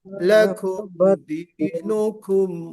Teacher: لکم میں کاف میں ہمس ہے